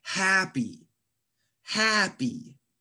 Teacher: Happy has two syllables. Happy. And we emphasize the first syllable. You stress the first syllable. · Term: word stress